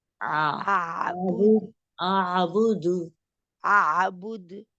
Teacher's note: اب میں نے ایک انگوٹھا ہی بلکہ رکھا ہوا ہے، آپ نے حلق کے درمیان میں تھوڑا سا وائبریشن بھی آپ کو فیل ہو رہی ہے آواز میں. بہت آسانی سے نکل آتا ہے. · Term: آئین